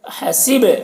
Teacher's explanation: با میں قلقلہ کریں گے، با میں آواز ٹکرائے گی